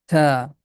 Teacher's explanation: Tip of tongue is touching with the root of frontal teeth.